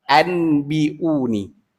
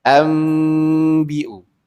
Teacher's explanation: kita baca seolah-olah kita baca hamzah mim mati di atas am. Bukan hamzah nun mati di atas an.